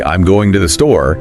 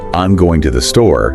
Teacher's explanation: if I say I'm going to the store with that rising tone, that's a question